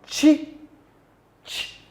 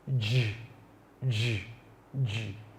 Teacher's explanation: They are the sounds chi, ch, and the sound j, j, j. The two sounds, the first sound is voiceless, while the other sound j is a voice sound.